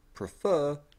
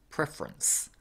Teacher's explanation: the word prefer changes into preference with the vowel after the F being completely dropped